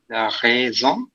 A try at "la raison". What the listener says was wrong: You're still saying song. Raisin. Raisin.